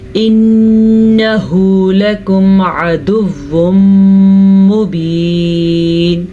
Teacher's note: نون کا غنہ ادا کرنا ہے، نون پہ شد ہے اور ادغام بالغنہ کا قاعدہ ہو رہا